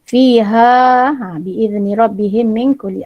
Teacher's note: lagi satu nun mati, kasih ada dengung ya